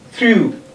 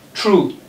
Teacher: Voiceless, dental fricative, and t.